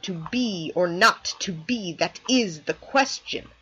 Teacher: unstressed stressed unstressed stressed unstressed stressed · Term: I am